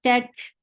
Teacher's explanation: ta is light, and there's no hums. Attached with kaf. Kaf will have hums because this is with sakun.